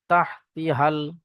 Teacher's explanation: যেহেতু এর পরবর্তীতে লাম সাকিন আছে তাই এখানে এই আলিফ গুলো পড়া হবে না